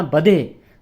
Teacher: ਧ ਬੁਲਾਉਣਾ ਹਿੰਦੀ ਵਾਲਾ ਤੇ ਥੋੜਾ ਪੋਲਾ ਉਚਾਰਨ ਕਰਨਾ, ਪਾਠ ਕੱਸ ਕੇ ਨਹੀਂ ਬੁਲਾਉਣਾ